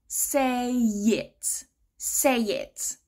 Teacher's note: the sound at the end of the first word is what we call a spread vowel. So your mouth is in this E kind of shape. · naturally we connect it together. Say it. So we link it with a y. Say it.